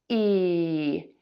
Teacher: your mouth is smiling and your tongue is very high, flat, and tense in the mouth